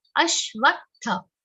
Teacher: Now, is followed by half sh and a complete V sound. V is followed by half ta and a complete th sound.